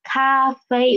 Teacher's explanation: the first tones are on the highest pitch highest pitch almost five fifth part fifth pitch okay cafe it